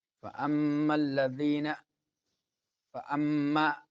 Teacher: فأما میم مشدد تو غنہ ہوگا، کون سا غنہ؟ غنہ زمانی۔